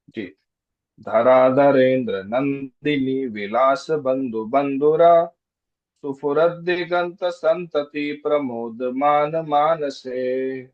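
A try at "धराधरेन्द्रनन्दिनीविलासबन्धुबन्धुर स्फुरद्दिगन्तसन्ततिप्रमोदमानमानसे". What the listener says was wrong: Perfect.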